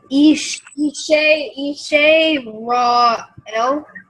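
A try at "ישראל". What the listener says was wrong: Almost. So that's a sin, not a shin, because the dot's on the left. And then the vowel under it is the silent vowel, so you don't pronounce the vowel part.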